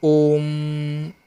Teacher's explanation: Last में जो म आ रहा है वो ओम में वो बहुत लंबा खिंच जाता है, तो इनको बोलते हैं ना प्लुत स्वर बोलते हैं इनको।